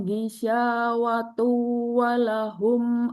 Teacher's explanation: Jadi harus harus tahu cara berhenti kalau memang berhenti di situ atau jika lanjut berarti ada dengung di situ. Ada domah tanwin ya ketemu wawu berarti ada dengung. Maka ada durasi dengung, ada waktu dengung minimal satu ayunan atau 1 seteng seperti itu ya.